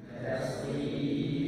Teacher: ro-nya dibaca tipis, sebelumnya kasroh